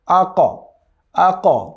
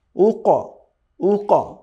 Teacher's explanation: তো কলকলার যে 5 লিটার আছে, এই 5টি লিটারে যখন সুকুন থাকবে অথবা জজম থাকবে, তখন সেটাকে বাউন্সিং সাউন্ড করে পড়তে হবে, অর্থাৎ এমনভাবে সাউন্ডটা হবে মনে হবে যেন এটা কেমন যেন ইকো করে আবার আপনার দিকে ফিরে আসছে।